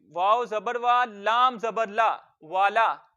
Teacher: उसके बाद वाव मुतहर्रिक है क्योंकि इस पर हरकत है जबर की, मुंह और आवाज खोल के पढ़ेंगे वाव जबर वा, और इसको लंबा नहीं करेंगे। लाम के ऊपर जबर है, मुंह और आवाज खोल के पढ़ेंगे और इसको लंबा नहीं करेंगे